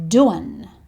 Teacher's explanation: He says this very quickly and he shortens a few of the words. He doesn't say doing, he says doin'.